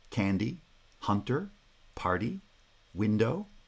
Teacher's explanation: these are bi-syllabic feet made up of a heavy syllable followed by a light syllable and again the first syllable is stressed because it's the strong syllable in the foot now heavy syllables